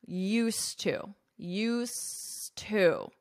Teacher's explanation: So you'll hold out that S sound, used to, and then you will pronounce the T of to